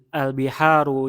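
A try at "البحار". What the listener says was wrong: Ini panjang. Al-biharu.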